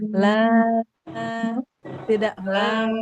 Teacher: Nah, Bu, lnya Ibu ee memanjangkannya ada nyasar ke hidung. Lnya di aljauf rongga mulut